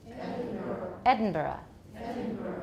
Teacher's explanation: But the Scottish or the UK pronunciation is Edinburgh. Edinburgh. You'll add a schwa at the end.